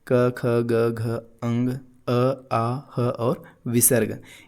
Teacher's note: कंठ से उच्चारित होने वाली सभी ध्वनियाँ